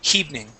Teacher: you pronounce a small H in front of that, saying hevening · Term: H sounds